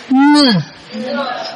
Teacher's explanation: Âm ngờ là có mũi nghe, cái nhóm cuối cùng này đều có mũi hết. Ngờ vừa cổ họng mà vừa mũi.